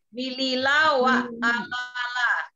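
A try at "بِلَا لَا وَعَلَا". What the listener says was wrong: Bilila wa ala pakai ain. Pakai ain.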